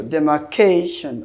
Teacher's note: and ending in -tion, mostly they take penultimate syllabic stressed.